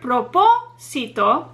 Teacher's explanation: the third to last syllable is the one that receives the stress or emphasis because that is where the accent mark is located proposito great